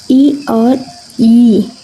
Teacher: आपकी जीवा जो है वो तालु पे जा रही है